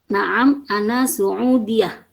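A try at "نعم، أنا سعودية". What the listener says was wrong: Ada yang kurang sedikit. Yang di tasjidnya itu adalah huruf ya. Karena yang ditekan adalah huruf ya-nya yang bertasdid ya.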